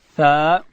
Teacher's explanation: داسې به وایو تا. او ثا ادا کیږي چې کله د ژبې سر د لوړې زامې د مخ دو غاښو و سرو ته د ژبې سر وروړو، دلته حرف ثا ادا کیږي.